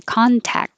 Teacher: you don't have to say the final t at all and that c sounds like a k so you can say contact and hold the k contact lenses